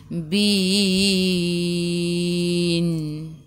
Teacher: Matikan dengan huruf nun, hujung lidah menyentuh gusi atas.